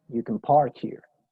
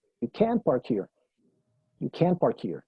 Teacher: Can no tiene fuerza ahí, ¿sí? El énfasis lo tiene park, estacionar.